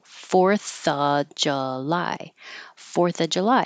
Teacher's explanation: we don't have to say of with a V when the next word begins with a consonant